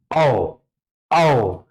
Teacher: औ ये कंठोष्ठ ध्वनि का उदाहरण है, कंठ और ओष्ठ